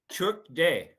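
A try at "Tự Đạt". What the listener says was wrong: it's not day. That's his English. When you say took day, that's English.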